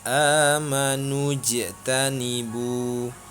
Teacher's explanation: Cara membacanya, huruf jim dibaca memantul karena hukum bacaannya adalah qalqalah. Alasannya karena huruf jim berharkat sukun.